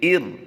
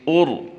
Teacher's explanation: हमने पहले सीखा रा साकिन से पहले हरफ पर ज़बर हो तो रा को पुर करते हैं, रा साकिन से पहले हरफ पर पेश हो तो भी रा को पुर पढ़ा जाता है, लेकिन रा साकिन से पहले ज़ेर हो तो उसको पुर नहीं किया जाता, उसे बारीक पढ़ते हैं